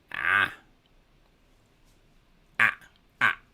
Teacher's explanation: It cuts the breath because it's coming from the back of the throat as what is called a guttural. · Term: hamza